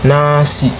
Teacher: Ujung lidah menempel ke gusi atas suara keluar dari hidung.